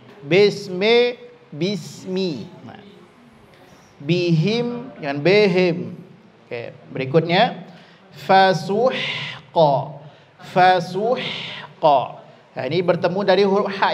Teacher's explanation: baris bawah itu dengan ikut menurunkan bibir bagian bawah bunyinya bukan e